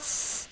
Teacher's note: 첫 번째 음절 S죠. 혀 위치, 윗니 안쪽과 이 몸이 만나는 치경 위치예요. 되셔서 공기 살짝 내보내면서 스 하지요.